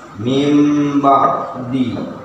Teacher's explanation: aslinya memang min ba'di, cuma karena dalam hukum tajwid dibaca mim ba'di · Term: iqlab